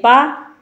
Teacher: ये अल्पप्राण है और अघोष है